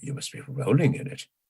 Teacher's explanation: accent on roll that is the only accent in the sentence